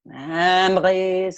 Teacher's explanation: all the way down to the glottal R in memories